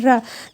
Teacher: जीभ तालु पर स्पर्श करके क्या होता है, लुढ़कती है, जैसे र। तो आप देख रहे होंगे जीभ से तालु पर स्पर्श कर रहा है और वहाँ से लुढ़कना यानी कि नीचे र।